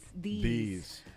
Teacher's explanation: la I un poco más pronunciada y más largo